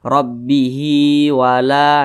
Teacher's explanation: kalau misalkan lanjut dibaca panjang, kalau berhenti huruf H-nya dibaca pendek.